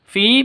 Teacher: fi panjang 2 ketukan, ada ya mati diawali dengan kasroh ya, mad asli.